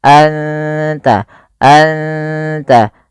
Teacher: suara nunnya samarkan ke ta dan tidak boleh dijelas tidak boleh anta tapi anta anta langsung ke makhraj daripada huruf ta. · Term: ikhfa hakiki